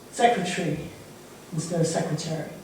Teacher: they weren't dropping their syllables in words like um secretary